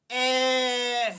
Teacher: आपको ऐसा लगेगा जैसे कंठ से निकल रहा, गले से निकल रहा